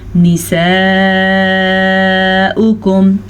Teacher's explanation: نساؤکم، حمزہ پیش او، واو نہیں پڑھنا ہم نے. جب واو پہ حمزہ آ گیا تو اس کا مطلب ہے ہم نے حمزہ ہی پڑھنا ہے، تو ہم پڑھیں گے نساؤکم حرث لکم، حرث لکم.